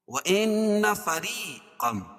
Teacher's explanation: مدہ ہے یا سکن سے پہلے را کے نیچے زیر ہے تو یا مدہ اور را کو باریک پڑھیں گے کیوں را کے نیچے زیر ہے